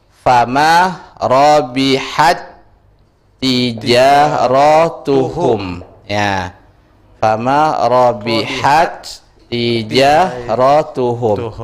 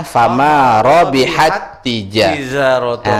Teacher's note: cara bacanya buang ta yang pertama, naikkan tasdid ke ta yang kedua. Jadi bacanya fama robihat tijaratun. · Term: idgham yang berserupaan